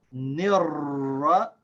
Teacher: We connect these two. We completely skip the alif lam. Both the alif and the lam are silent.